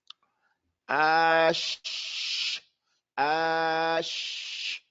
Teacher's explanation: it didn't stop the air nor did it stop the sound the sound continued to flow and the air continued to flow